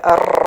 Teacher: നാവിന്റെ അറ്റത്ത് ഒരു പിടക്കൽ പോലെ അർ എന്നുള്ള ഒരു പിടക്കൽ വരുന്നത്